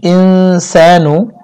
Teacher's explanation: নুন সাকিনের পরে সিন আসছে, ইখফা গুণনা করতে হবে